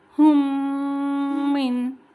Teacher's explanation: ایک میم کو دوسرے میم سے مرج کریں گے، ملائیں گے، اور 2 سے 3 سیکنڈ کا غنہ بھی کریں گے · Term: ادغام شفوی